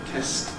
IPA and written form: test (Test)